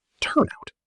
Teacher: The consonant sound at the end of the first word links right into the vowel of the second word.